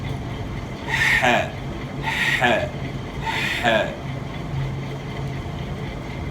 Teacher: اور دوسرا یہ کہ آپ انگلی رکھ کر جو ہے محسوس کر سکتے ہیں کہ گلے کے درمیان سے ح کی آواز نکلتی ہے